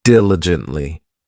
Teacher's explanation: This adverb has four syllables and the stress is on that first syllable